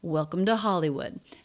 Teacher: the pitch goes up to peak on the stress syllable of Hollywood before the voice comes back down.